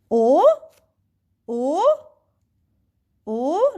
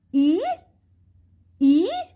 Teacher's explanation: so you're going with your voices from down to up not like the first one second one you're going what so